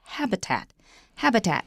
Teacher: Now, normally we say that one word has only one main stress, like habitat. Habitat, the stress is on the first syllable.